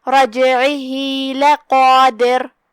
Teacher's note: را کا حکم ہے تفخیم، مطلب ہم را کو بھاری آواز میں پڑھیں گے · یہاں جیم کا حکم ہے قلقلہ، ہم جیم کو ہلاتے ہوئے یہ کلمہ کو ادا کریں گے